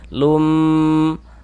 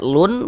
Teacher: Sehingga ini yang awalnya kita baca lun karena dia idgham bi gunnah, maka bunyi tanwinnya masuk ke huruf mim sehingga dibaca lum.